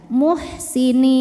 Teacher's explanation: Mad tabi'inya ya sukun yang didahului kasrah, kemudian huruf yang disukunkannya adalah huruf nun. Maka nunnya panjang, boleh 2 atau 4 atau 6 harokat, asal konsisten dalam sekali baca. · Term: mad arid li sukun